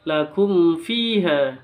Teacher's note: ada mim sukun bertemu dengan Fa itu bacaan izhar jelas